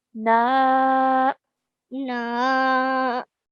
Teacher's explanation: Noon with a fatha and an alif madda after it. So stretching for 2 counts.